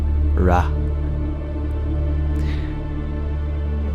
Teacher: is it starts with an R an R sound ra and the a sound that follows is prolonged it's two times the length of the blink of the eye